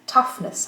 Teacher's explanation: L'accent reste sur tough. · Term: suffixe neutre